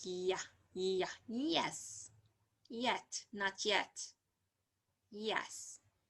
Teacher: palatal like a body of the tongue and the hard palate